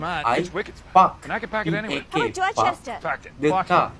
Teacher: They don't pronounce the letter R at the end of the sentence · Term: non-rotic